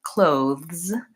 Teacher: it has the voice th it comes at the end of the word which doesn't happen for many words in English